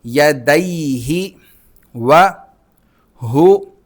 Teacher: دال کو ہم ڈائریکٹ واو کے ساتھ ملائیں گے اور واو پر تشدید ہے تو اس پر غنہ بھی ہوگا، تنوین پیچھے موجود ہے۔